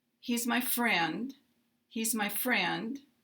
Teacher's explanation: we have fallen ination and it is a Glide down · will receive a little higher pitch than the unstressed words so in a word like friend we will have a slight rise in pitch for being a stressed word and also have a rise because in in intonation so friend · So in these three statements, he's my friend, he's my friend, we have falling intonation, and it is a glide down. Now, he's and my are both unstressed words in this sentence, and friend is a stressed word because it is a noun. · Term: sentence stress